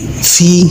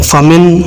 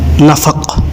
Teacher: निचले होंठ को ऊपर वाले जो सामने दो दांत के जो निचले किनारे हैं उनके साथ मिलाएं तो हर्फ फ़ा अदा होगा। जिस तरह आप अपने निचले होंठ को ऊपर वाले दांत से काटते हैं, बिल्कुल यही मखरज है।